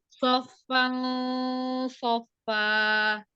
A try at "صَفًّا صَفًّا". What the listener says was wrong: Naik ya, naik. Sofa, sofa. Tapi bukan NG ya, bunyinya jangan NG ya. Jadi mendekati ya makhrajnya. Siap-siap lidahnya ke makhraj huruf sod ya. Sofal. Jadi naik, pangkal lidahnya yang naik ya. Sofal, sofa.